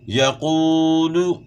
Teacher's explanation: یقول قاف موٹا ہوگا اور واو مدہ ہے، ایک الف کی مقدار کے برابر کھینچنا ہے ، پیش کو آپ نے معروف پڑھنا ہے، مجہول نہیں پڑھنا،